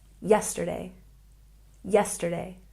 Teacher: And we have a stress on the first syllable